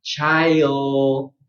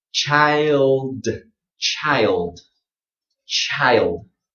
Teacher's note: as you're saying I, your tongue will raise. I, okay, I, and then your tongue is in position to say d. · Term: diphthong